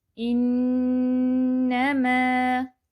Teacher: نون مشدد آ گیا، 3 time hold بھی کریں گے۔